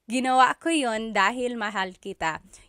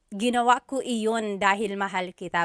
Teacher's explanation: usually the letter I sound is dropped